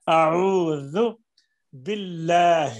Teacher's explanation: ہا کو سینے سے نکالنا ہے، حلق سے نہیں. حلق کا وہ حصہ جو سینے کے ساتھ ہے.